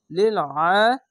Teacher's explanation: আইনটিকে মোটা করে গলা চিপে পড়বেন এবং খারে জবর এক আলিফ টেনে পড়বেন